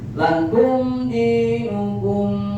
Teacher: Ketentuan izhar syafawi, setiap mim sukun bertemu dengan huruf hijaiyah selain mim dan ba maka hukum tajwidnya izhar syafawi. Cara membacanya tidak boleh ditahan atau didengungkan huruf mimnya.